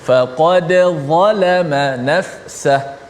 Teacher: Menjelaskan dal tu mati. Faqad, kebetulan dal tu ada qalqalah, kena bunyi qalqalah